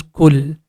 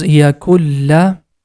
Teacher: Here this word is yakun and the next letter is lam and we have a connecting sign top of that, which means this ku sound is directly going to connect with lam. The sound becomes kul. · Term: Idghaam